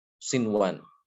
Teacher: Maka juga tidak boleh dibaca siwan, tidak boleh diidghamkan, tapi harus diizharkan.